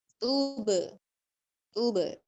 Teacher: با کو ہلا کر پڑھیں گے یعنی با کے اوپر قلقلہ کریں گے